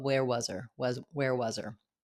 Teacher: We're going to drop the H of her. We're going to link the Z on was · We're going to link the Z on was, where was her? And our schwa in was is going to be very quick. So not where was her, but where was her?